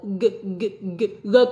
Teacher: g g con phát giống âm g của tiếng Việt nhưng nó không phải là âm g bật ra miệng mà là âm g cổ